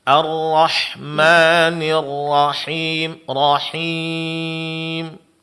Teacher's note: Ra-nya jangan lupa, jangan sampai terpanjangkan. Lebih dari satu harakat ya.